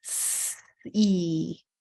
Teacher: both phonemes in sea are continuous and can be exaggerated for students